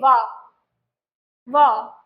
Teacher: केवल और केवल वकार ऐसा है, व ऐसा वर्ण है जिसका उच्चारण स्थान है दंतोष्ठ